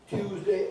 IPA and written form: ˈtjuːzdeɪ (Tuesday)